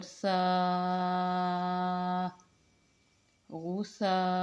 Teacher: سا نرمی کے ساتھ اور مد کے ساتھ لمبا کر کے